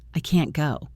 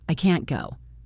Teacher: But the negative word can't is usually stressed and the vowel sound is clear. It sounds like can.